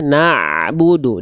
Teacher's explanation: Dialirkan sedikit bunyi ainnya. Jangan na'budu, jangan terhenti. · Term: ain sukun